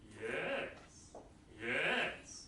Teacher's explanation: rise fall, yeah, you rise first and you fall. If you practice it with yes, then you know what it sounds like.